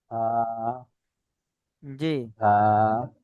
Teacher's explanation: হা, এটা গলার মাঝখান দিয়ে হবে।